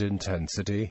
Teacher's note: the vowel represented by the letter E is stressed, so it is longer and pronounced with a higher pitch and intensity than the other vowels